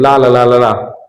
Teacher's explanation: मुख के मध्य भाग में दो अवयव मिलकर वायु अवरुद्ध कर देते हैं, किंतु हवा दोनों पार्श्वों से होकर निकल जाती है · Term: पार्श्विक व्यंजन